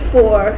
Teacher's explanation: It is a labiodental fricative. Fa is articulated when the upper teeth come in contact with the lower lip. It is articulated in such a way that the air keeps flowing out with friction, so that's why they are known as fricatives. · Fa is unvoiced phoneme as it is pronounced in such a way that vocal cords are not vibrated.